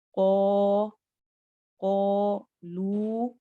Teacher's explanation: कौफ और अलिफ दोनों मोटे भी होंगे और आ लंबा होगा